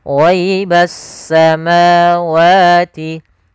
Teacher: pada lafal ma wa ini ada mad thabi'i. Kita panjangkan sepanjang dua harakat.